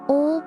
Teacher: Now L at the end of words all or the tongue stays up.